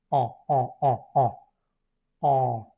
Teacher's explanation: Pones la boca como diciendo una ah, pero tratas de nasalizarlo, de que salga un poco de aire por la nariz y por la boca, como si te estuvieras un poco ajando. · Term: vocal nasal